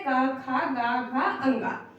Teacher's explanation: वो बोले जाते हैं कंठ से कंठ मतलब गला